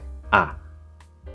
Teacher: Now, what you want to do, as you see, is you start with ah, and you end with I. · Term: the diphthong I